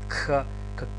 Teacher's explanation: правилно е да се изговара Кх, значи едно К и еден здив Х, Кх, како што правилно да изговораме Пх или тхетата Тх, иако ние по договор ја изговараме Х. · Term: Кхи